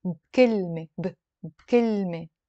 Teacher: a lot of times that B with a كسرة, when we're speaking, we pronounce it with a سكون. And it becomes بكلمة.